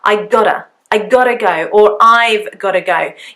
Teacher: Although it is G-O-T-T-A, the T actually, when I speak quite fast, is more of a D sound.